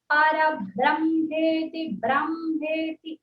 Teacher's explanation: బ్రా అంటానికి ప్రయత్నించాలి బ్రే అనద్దు